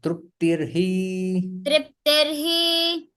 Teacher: विसर्ग रेफ में परिवर्तित हो जाता है